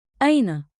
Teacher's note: Keep it rising at the end, curious, friendly. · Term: full question shape